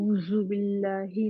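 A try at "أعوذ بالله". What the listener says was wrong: जू करें, ये जू नहीं है, जेड वाला जू नहीं है, आऊजू, आऊ जू।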